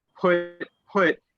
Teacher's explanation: if you say it with a P, put, you see this breath of air come out to your hand